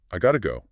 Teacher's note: Notice how the t sound in got to often changes to a fast d sound or sometimes just disappears when spoken quickly. It lets the sounds merge seamlessly.